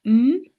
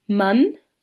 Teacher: The bilabial nasal uh m is easy to recognize for example in man